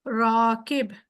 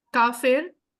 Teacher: र मोटा होक निकलेगा थोड़ा सा डीप बन जाएगा